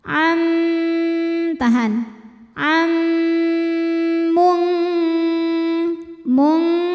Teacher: menghadapi huruf mim jadi bunyinya m masuk langsung ke mim dan bunyi m-nya ini kita tahan didengungkan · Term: idgam bunah